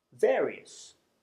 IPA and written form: ˈveəriəs (various)